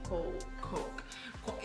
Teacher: Porque é um ou comprido.